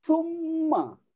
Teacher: Kalau jumpanya nun yang bersabdu, mim yang bersabdu, nama hukumnya wajibul gunnah, wajib dengung. Bila namanya wajib, kena buat.